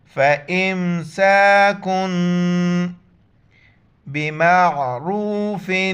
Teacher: ف زبر ف، حمزہ میم زیر ام، سین الف زبر س، فامس، کاف میم دو پیش کم، اور یہاں پر ہم اخفا کریں گے، ناک میں آواز چھپائیں گے، ساؤنڈ ان نوز۔